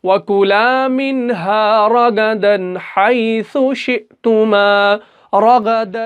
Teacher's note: دال الف دو زبر کو ہم پورا پڑھیں گے اظہار کر کے، دن دن ایسے۔